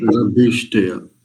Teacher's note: रभिष्टय, भकार जो है वो महाप्राण वाला है।